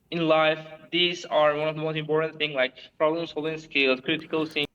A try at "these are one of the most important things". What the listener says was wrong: You're speaking too quickly. You're speaking so quickly that you don't even pronounce all of the words like fully.